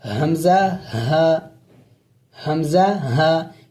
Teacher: حمزہ ہا یہ حلق کے آخری حصے سے ادا ہوتے ہیں